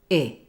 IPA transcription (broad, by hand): ɪ